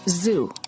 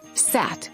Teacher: the tongue and lip positions of the zoo and the su the only difference between them is vibration or no vibration